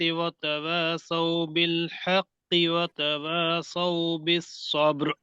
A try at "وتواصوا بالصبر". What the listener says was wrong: وتواصوا تا کے اوپر زبر صاف واضح ہونا چاہیے.